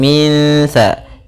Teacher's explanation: Apabila ada nun mati bertemu dengan huruf sa, ini sa termasuk huruf ifa, maka cara membacanya kita samarkan langsung ke huruf sa-nya